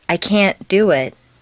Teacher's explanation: make the negative can't sound very short and stress both can't and the verb